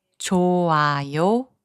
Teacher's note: The consonant 히응 becomes silent when it is the last consonant of a syllable. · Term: silent 히응